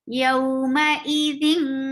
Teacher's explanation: You're keeping your sound in your nose. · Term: ikhfa